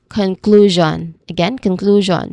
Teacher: It sounds like jean. So there is a voiced there's a buzzing sound in there. It is similar to vision. Okay. So we say it as conclusion.